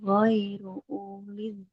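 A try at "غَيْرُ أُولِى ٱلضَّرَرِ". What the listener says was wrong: Nggak boleh uli. Karena di atas wawunya dia ada tanda bulatannya. Maka di sini tidak dibaca. Ghairu uli dorori. Jangan uli. Uli. Jangan dipanjangkan. Wawunya dia tidak dianggap. Ghairu uli dorori.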